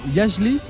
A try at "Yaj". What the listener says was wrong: On prononce que Ya.